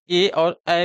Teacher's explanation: कंठ तालव्य ध्वनियां वे ध्वनियां होती हैं जिनका उच्चारण कंठ एवं तालु के माध्यम से होता है।